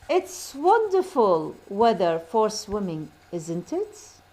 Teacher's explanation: a question tag with falling intonation isn't really a question at all